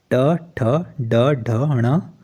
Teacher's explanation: टवर्क जो है वह मुर्धा से